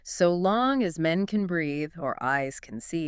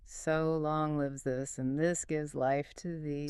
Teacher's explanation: 10 syllables. Unstressed. Stressed. Unstressed. Stressed five times. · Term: amic pentameter